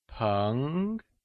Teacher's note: Péng is pronounced with a mid rising tone